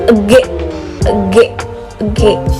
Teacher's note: cara melafalkan konsoid G ini menggunakan organ belakang lidah dengan langit-langit lunak. Kedua, konsoid G merupakan konsoid plosif atau konsoid hambat, yaitu konsoid yang dihasilkan dengan cara menghambat udara yang keluar dari paru-paru secara penuh.